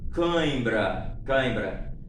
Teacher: Porque como são ditongos nasais, né, os aqui ditongos nasais, vocês vão perceber que é necessário que saia um pouco de ar pelo nariz.